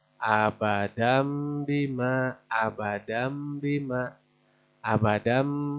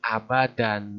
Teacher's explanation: Tanwin jabar menghadapi huruf ba, begitu. Maka dibacanya mim.